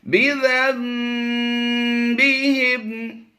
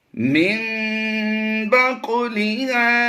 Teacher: नून की आवाज़ को हमने मीम से कन्वर्ट किया है। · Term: इकलाब